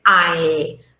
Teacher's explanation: the first element is ah and the second element is e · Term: diphthong